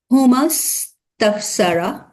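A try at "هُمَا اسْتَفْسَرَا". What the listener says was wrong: হুমাস তাফসারা একটু লম্বা হবে, লাস্টে একটা আলিফ আছে।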